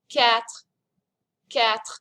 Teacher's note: There's a little bit of a French R at the end.